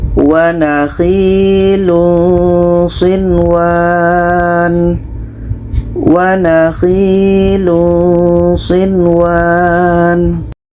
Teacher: Nun jelas, waw jelas, tidak ada dengung. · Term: izhar wajib